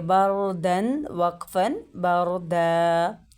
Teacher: اب دیکھیں را ساکن سے پہلے کیا ہے، زبر آ گئی ہے، تو ہم را کو پر ادا کریں گے ، بردا، بردا نہیں پڑھیں گے، ٹھیک ہے، را کو پر